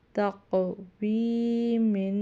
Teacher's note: تا پڑھی زبر قاف ساکن تق، واو پڑھی زیر یا ساکن وی تق وی، میم دو زیر من تقوی من۔ یہاں قاف حروف قلقلہ میں سے اس لیے اور موٹا بھی پڑھا جائے